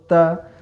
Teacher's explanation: बताओ दंत को स्पर्श किया